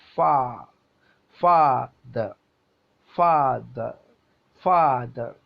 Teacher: inverted comma പോലെ ഒരു mark ഇടും ഫാ ഫാ ദ നമ്മൾ ഉണ്ടല്ലോ ഫാദർ എന്നതിൽ ഫ എന്നതിലാണ് സ്ട്രെസ്സ് കൊടുക്കുന്നത് അപ്പൊ ഫാ ഫാ ദ ഫാദ ഫാദർ ഫാദ അങ്ങനെയല്ല നമ്മൾ ഉച്ചരിക്കേണ്ടത് ഫാദ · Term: ആക്സെന്റഡ് സിലബിൾ